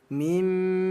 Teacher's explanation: Ada mim yang bertasydid namanya ghunah. Disingkat gh artinya ghunah. dibaca dengung. · Artinya ini kita tahan dua ketukan dibaca dengung.